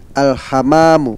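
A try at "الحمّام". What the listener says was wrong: Nah, memnya di sini ditasdid, jangan lupa. Ulang sekali lagi.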